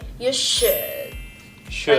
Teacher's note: stop the air coming out of your mouth when you hit the D in should